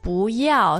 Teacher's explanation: want to point out that bu here is bo ya so there's also a change of tone which changes from the fourth tone into the second